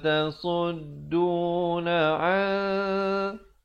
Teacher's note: Di sini hukum ikhfa. Asalnya an, tapi bila datang sin, an 2 harakat.